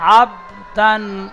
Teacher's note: বার উপরে সাকিন এসেছে, হরফে কলকলা 5টি অক্ষরের মধ্যে একটি অক্ষর বা, তাই বাকে কলকলা করে আগের অক্ষরের সাথে মিলিয়ে পড়তে হয়।